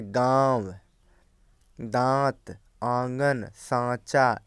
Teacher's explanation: जैसे अनुनासिक का ये चिन्ह होता है और ऐसे स्वरों का उच्चारण नाक और मुंह से होता है और उच्चारण में लघुता रहती है, जैसे गांव, दांत, आंगन, सांचा इत्यादि।